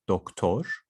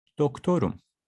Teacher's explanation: I have a round vowel over here, doktor. So that's why I continue with a round vowel again, doktorum.